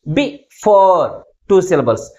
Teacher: Second syllable is pronounced with greater force comparing with first syllable. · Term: primary stress